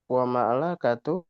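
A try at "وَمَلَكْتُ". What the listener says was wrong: kafnya sukun. Wa malak tu.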